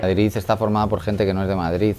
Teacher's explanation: él termina diciendo ciudad y Madrid con Z